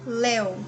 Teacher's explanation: Léu é um ditongo oral, aqui é decrescente. Primeiro tem a vogal, depois a semivogal, tá?